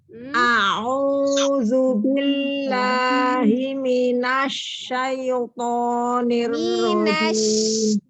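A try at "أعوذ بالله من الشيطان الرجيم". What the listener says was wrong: Nunnya itu tebal, jangan ditebalin. Jangan ditebalin. Tafasi bukan tebal. Nun fathah na. Nun fathah na. Bukan minash tidak. Minash.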